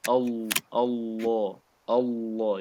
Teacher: This lam of Allah is a heavy lam in this case.